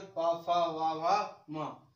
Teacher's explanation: पा वर्ग जो हमारा है इसको बोलते हैं ओष्ठ से, मतलब ओंठ